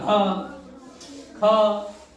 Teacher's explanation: महाप्राण में जहां देर तक आवाज बोले, हकार की ध्वनि आए, वो महाप्राण कहे जाते हैं।